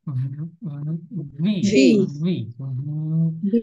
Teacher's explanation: ভি, B. বি না, উপরের দাঁত নিচের ঠোঁটের সাথে লাগবে।